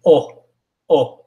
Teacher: Don't say a W sound, it's O.